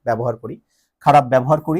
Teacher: জফলা প্রথম বর্ণে থাকলে উচ্চারণের সময় সেটা কি হয়ে যায়, আকার হয়ে যায়।